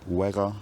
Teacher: as usual the word final Z disappears giving we and then the vow degrades maybe through a couple of steps